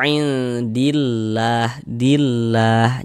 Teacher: Nah, jadi kalau ada lafaz Allah sebelumnya ada harakat fathah maka lafaz Allahnya dibaca tarkik dibaca tipis.